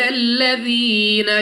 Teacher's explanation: یا ساکن سے پہلے زیر یا مدہ 2 سیکنڈ تک کھینچا جائے گا